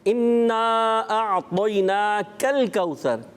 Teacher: اس میں کاف ہی ہے قاف تو ہے نہیں. تو اس کو باریک رکھنا ہے